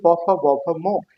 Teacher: এই প, ফ, ব, ভ, ম এটা উচ্চারণ করতে আমাদের দুই ঠোঁটের সংস্পর্শে আমরা এই ধ্বনিটা উচ্চারণ করি, এই জন্য এটার নাম হচ্ছে যে ওষ্ঠ ধ্বনি। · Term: অষ্ট ধ্বনি